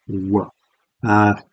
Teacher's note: the W sound, the approximant, the labial velar approximant